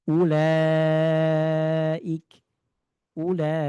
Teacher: maka dia harus dibaca panjang empat atau lima harakat dan namanya adalah mad wajib muttasil · Apabila ada fathah setelahnya alif, dhamma setelahnya waw sukun, kasroh setelahnya ya sukun, bertemu dengan hamzah dalam satu kata, maka dia harus dibaca panjang 4 atau 5 harokat dan namanya adalah mad wajib muttasil. Contohnya kita bisa lihat di sini, ini adalah lam fathah setelahnya alif.